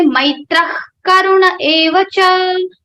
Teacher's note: in the place of Visarga ha, you have to say kha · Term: Jivva Mulya